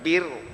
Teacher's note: Bir, ba yang nipis, ra yang tebal.